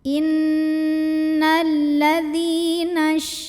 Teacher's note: dzal yang berbaris kasrah ini kita panjangkan sepanjang 2 harokat saja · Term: mad tabi'i